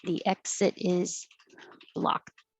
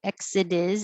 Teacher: this t changes to a d and it connects to the i